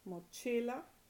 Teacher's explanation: Mochila, it ends in a vowel. So the stress, naturally occurring stress, is on the next to the last syllable.